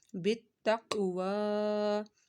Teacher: तक काफ साकिन है, काफ का कलकला होगा और वो के ऊपर खड़ा मद्दा है, वो को लंबा करना है एक अलिफ के बराबर और काफ हरूफ मुस्तालिया इसको मोटा भी पढ़ना है।